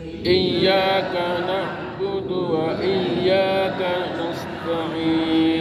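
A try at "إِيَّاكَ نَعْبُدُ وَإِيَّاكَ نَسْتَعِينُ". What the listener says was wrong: Jadi tidak buduan, tidak ada buduan. Na'budu wa iyyaka. Jangan buduan, ya Pak ya.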